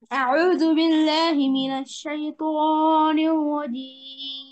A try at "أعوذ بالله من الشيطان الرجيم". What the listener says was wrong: হ্যাঁ আউযু বিল্লাহ মাদ হয়েছে কিন্তু শাইতাতে বেশি মাদ হয়ে গেছে খেয়াল করে আউযু বিল্লাহি মিনাশ শাইতানির রাজীম